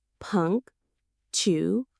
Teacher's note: The stress is right at the beginning. Punctual.